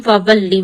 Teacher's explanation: And when you read second time lam with its own harakah, you will put a stress on lam.